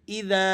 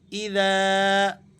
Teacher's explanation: ذال کے بعد چونکہ الف ہے، الف مدہ ہے، تو ہم اسے ذرا کھینچ کر پڑھیں گے